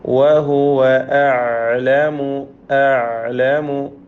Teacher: ഐൻ തൊണ്ടയുടെ മധ്യത്തിൽ നിന്ന് വ്യക്തമാക്കി ഉച്ചരിക്കുക. വഹുവ അഅലമു.